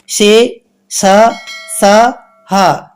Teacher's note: ఊష్మములు ఊది పలుకబడేవి ఊష్మములు